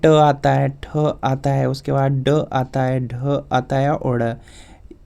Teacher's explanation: इनका उच्चारण स्थान मूर्धन्य है या मूर्धा है